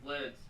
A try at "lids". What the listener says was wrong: It sounds like lits.